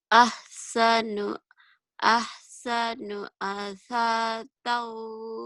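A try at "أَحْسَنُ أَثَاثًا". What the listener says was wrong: Asasau. Bukan asatau. Asasau. Sama titiknya 3.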